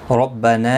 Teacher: ربنا را زبر کی وجہ سے پر پڑا جائے گا. نا مد منفصل ہے، 3 الف کی مقدار کے برابر کھینچ کر پڑھیں گے